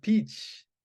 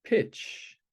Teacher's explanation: So the words peach and pitch are very similar. They only have a distinction between a tense and a lax vowel sound. The E and the I sound is different.